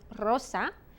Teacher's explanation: The R can either be rolled or a single R. If it begins the word, as in rosa, or if it's two double R's in the word, como perro, then you roll your R.